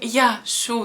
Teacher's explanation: Вместо «ия» у нас остался «я». И, соответственно, мы говорим «яшу» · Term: выпадении гласных